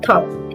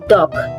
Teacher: The sound T in top is voiceless, while D in dog is voiced.